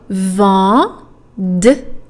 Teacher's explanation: Vendredi has another nasal vowel in there. It's the oval one, en.